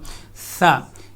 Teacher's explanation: اس میں سیٹی کی ساؤنڈ، وسل کی ساؤنڈ بالکل نہیں ہوگی۔ اگر اس میں سیٹی کی آواز آئے گی تو یہ سین سے مشابہت اختیار کرے گا، ثا۔